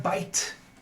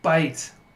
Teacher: So we have b, and then we have I, that's a diphthong I, and then t.